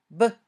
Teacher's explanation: When you say b, your vocal cords vibrate. It's a voiced sound. B. When you say both p and b, your mouth moves in the same way.